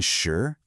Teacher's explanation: a rising second tone